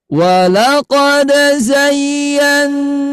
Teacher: ketika ayah bunda sekalian membaca panjang huruf mimnya. Nah, nadanya Bunda angkat ya.